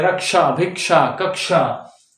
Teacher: क्ष यानी क और मूर्धन्य श मिला होता है, क्ष। ये भी हम मूर्धा के पास से ही बोलते हैं, क्ष।